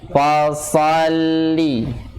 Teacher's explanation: sifat isti'lanya dan sifat itbaqnya harus kelihatan, harus terasa